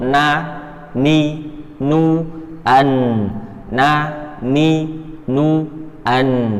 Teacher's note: Nun, ujung lidah pada posisi gusi.